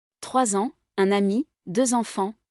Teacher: the last consonant of the word, usually unpronounced is orally accentuated with the initial vowel of the following word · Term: liaison